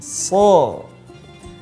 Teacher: Terjadi kesalahan ketika menyebutkan huruf so, bibirnya ikut monyong, ikut mencucu, so, maka itu yang keliru.